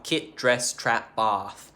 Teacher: And that is where kit, dress, trap, bath become kit, dress, trap, bath. There's like a very slight rotation in the positions of those front vowels, and also bath for some reason. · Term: short front vowel chain shift